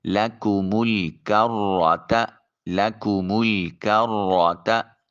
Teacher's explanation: را کے اوپر چونکہ زبر ہے اس لیے اس کو مفخم موٹا اور پر کر کے ادا کریں گے۔ لَكُمُ الْكَرَّةَ لَكُمُ الْكَرَّةَ، تا کو بریک ادا کریں گے تاکہ طا اور تا میں فرق رہے۔